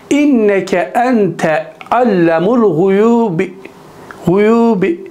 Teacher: guyub kelimesine B harfinin esre harekesini 1/3 kısmını okuyarak durmuştur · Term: Rem